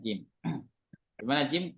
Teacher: Jim keluar dari tengah lidah ya menempel ke langit-langit atas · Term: huruf Jim